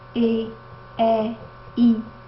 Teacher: quando a gente fala E, I, percebemos que a língua avança, ela está mais para frente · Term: vogal anterior